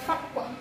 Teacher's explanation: Fak itu dibacanya 1, tetapi ia memantul karena termasuk bacaan, hukum bacaan qalqalah sughra. Kita kasih 1, dan di sini memantulnya itu dipantulkannya itu huruf qaf.